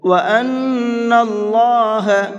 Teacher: اللہ کے لام کو منہ بھر کے پڑھیں گے، پر کر کے پڑھیں گے، اس لیے کہ اللہ کے لام سے پہلے زبر ہے۔